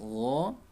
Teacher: Huruf ghain makhrajnya dari tenggorokan paling atas